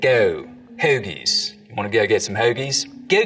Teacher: starts to happen as we get down towards philly is that the goat diphthong starts to move forwards in the mouth